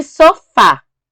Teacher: E sofá. É o fá, a sílaba mais forte, e a última sílaba, e a gente classifica como oxítona.